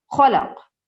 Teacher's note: یہاں پر جب ہم اسٹاپ کریں گے تو سائلنٹ ہو جائے گا قاف، اور ایسے تلفظ کیا جائے گا، خلق، اقرا بسمی ربک الذی خلق۔